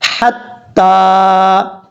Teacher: تا کے بعد جو یا ہے اس یا کو پڑھنے کی ضرورت نہیں ہے. اب اس کے بعد ہے، کیونکہ یہ لکھا ایسے جاتا ہے، قرآن پاک کا رسم الخط ایسا ہے، اس میں لکھا جائے گی، یہ یا پڑھی نہیں جائے گی.